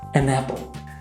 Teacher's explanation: we don't usually say an and apple separately we link them together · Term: linking sounds